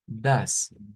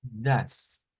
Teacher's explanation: más que una E es un schwa. Das, The correcto.